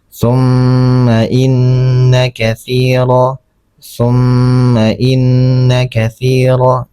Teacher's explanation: Jadi ini mim ini gunnah juga karena mimnya berharokat, ada tasydidnya. Cara membacanya ditahan selama 2 harokat.